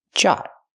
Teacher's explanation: Use the hard j sound like jump and juice. Use the open ah sound like hot and stop.